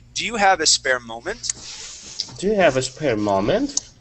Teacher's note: my voice goes up at the end